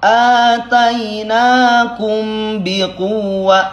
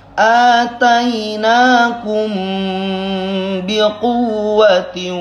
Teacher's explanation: mim sukun menghadapi ba, ikhfa syafawi namanya, jadi agak lamaan